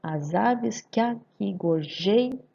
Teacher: eu vou juntar o que com a. Por quê? Porque eu falo junto.